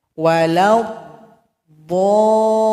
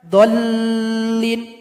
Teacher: Karena ini merupakan mad lazim. Dipanjangkan dulu enam harakat baru tasdid kepada huruf lam.